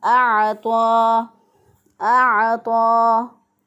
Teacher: आइन जो है इसको वस्ते हलक से अदा करेंगे, गले के दरमियान से अदा करेंगे।